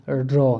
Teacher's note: जब रॉ बोलोगे तो अब क्या होगा, जो तालु है ना उससे हमारी जीभ लुढ़क कर स्पर्श करते हुए आएगी, तो हमारे इसको क्या बोलते हैं, इसको लुंठित व्यंजन इसको बोलते हैं।